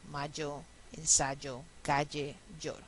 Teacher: Y vamos a llamar yeístas a los que no hacen la diferencia como yo y como la mayoría de ustedes y pronuncian todo como ya.